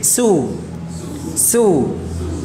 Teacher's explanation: suaranya mengarah ke bawah, istifal